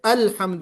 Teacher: الحمد میں لام پر قلقلہ یعنی ویبریشن نہیں ہونا چاہیے، الحمد نہیں ہونا چاہیے بلکہ الحمد ہونا چاہیے.